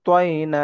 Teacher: তয়ের উচ্চারণটা আমরা ঠোঁট গোল করে পড়বো।